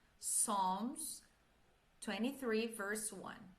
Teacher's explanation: Psalms, o P é mudo, nós não vamos pronunciar